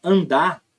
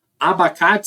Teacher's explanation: do traço nasal então o traço nasal que é mais nasal o a que era menos nasal vai mudar para mais nasal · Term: assimilação nasal